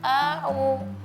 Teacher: Kalau kita melafalkan a'u, itu hamzahnya kepanjangan. Harusnya a'u langsung, jangan a'u.